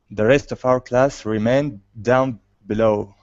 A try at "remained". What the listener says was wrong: Yeah, give me a long A there. So it's instead of remind, remained. The rest of our class remained down below. Below instead of blow, because blow is okay. If you just say blow, it's that's what that means.